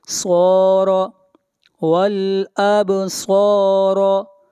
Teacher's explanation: با کے اوپر قلقلہ ہوگا